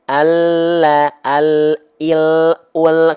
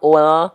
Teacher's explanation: Karena L itu hanya ujung akhir lidah saja disentuhkan. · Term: L alfabet